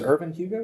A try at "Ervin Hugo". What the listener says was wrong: Irvin, E-R-V-I-N, Hugo. Not I-R. E-R. Irvin Hugo.